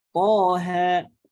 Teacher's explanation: to 2 harokat, ha 2 harokat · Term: mad tabi'i harfi